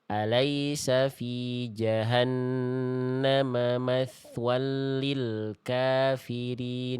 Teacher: Lam tasdid di sini kan idgam bila gunah jangan sampai ditahan ya. Fattain ketemu lam namanya id bila gunah al-nya jangan sampai ditahan, jangan sampai matwalli tapi matwalli cukup di lebur dan ditekan huruf lamnya ya.